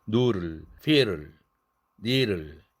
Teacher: 여기에서 드는 설탄음의 음성 환경이므로 설탄음으로 발음되기도 해서 두 음이 자유 변이한다는 거.